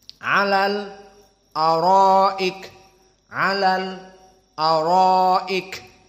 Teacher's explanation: as-sakt istidadan, persiapan untuk lam sakinah bertemu dengan hamzah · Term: as-saqt